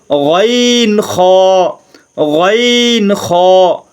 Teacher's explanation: তিন নম্বর মাখরাজ হলকের শেষ হইতে